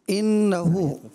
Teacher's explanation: نون مشدد کا غنہ ہے، لیکن بہت زیادہ دراز بھی نہیں کرنا، کوشش یہ کرنا ہے مطلب غنہ ہی ہو.